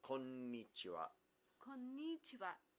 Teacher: anytime there's a doubled consonant, you get a pause. So konnichiwa, you hold that n sound.